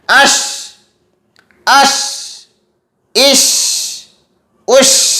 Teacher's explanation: शीन को अदा करते हुए हवा आवाज़ जो है, आवाज़ वो मुंह में फैलनी चाहिए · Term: आवाज़ का फैलाव